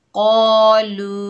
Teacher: तो यहाँ मद बनेगी मद्दे मुनफसिल जायज़, इसको 3 अलिफ की मिकदार खींच कर पढ़ेंगे। क़ालू हमज़ा के ऊपर ज़बर है, बगैर खींचे पढ़ेंगे आ।